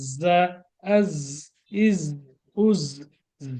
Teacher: এটাকে একটু বাতাস বের করে পাখির মতো আওয়াজে পড়তে হবে